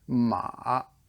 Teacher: it almost goes down to the below the range of your voice and so you kind of hit that gravelly pit at the bottom · the third tone is it's a dipping tone